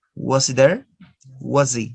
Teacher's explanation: Just E. No ha sound. · But native speakers, they usually omit the sound ha.